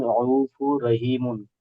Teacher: তানবিনকে রয়ের সাথে মিলিয়ে বিনা গুণনায় জাহির করে পড়তে হবে। · ইয়া সাকিনের আগে জের আছে, ইয়া মাদ্দা হবে, ইয়া মাদ্দাকে একাধিক পরিমাণ টান দিয়ে পড়তে হয়। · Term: ইদগামের